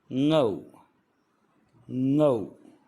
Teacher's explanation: लेकिन ngौ में ज़ुबान का मध्य का भाग ऊपर वाले तालू से टच होता है, तो ये इसका उच्चारण है ngौ।